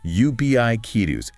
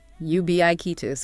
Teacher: You have to focus strongly on that BIK part. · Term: central stress